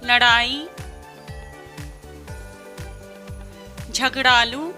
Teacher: उत्क्षिप्त व्यंजनों का उच्चारण मूर्धन्य है